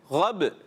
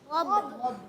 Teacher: با میں کلکلا، یعنی آواز لوٹ کر آنی چاہیے